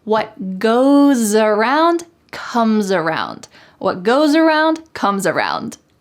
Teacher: say this phrase together with the S changing to a Z